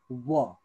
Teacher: पनि अर्ध अलिकति जोडिन्छ प फ ब भ म व है व अलिकति चुच्चो परेर जोडिन्छ